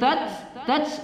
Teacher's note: tats adalah sifat hams pada ta, ada berangin dia. Tats lu kita baca man asli matabi'i dua harakat atau satu alif.